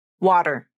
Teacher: the most natural pronunciation uses the flap which is like a quick D sound water to make the flap the tongue tip quickly bounces against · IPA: /ɾ/